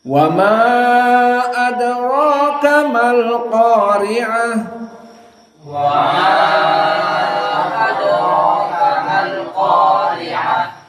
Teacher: Hafiz an Asim dan Ibnu Amir di sini membaca majaiz munfasil mutawassit arba'ah